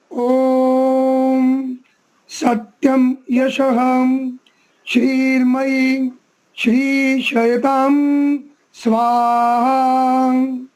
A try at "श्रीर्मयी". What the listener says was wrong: यहाँ पर जो श्री के बाद में र उड़ा हुआ है माँ पर, उसका भी उच्चारण में आना चाहिए, श्रीर्मयी। ठीक है, श्रीर्मयी। हाँ, श्रीर्मयी।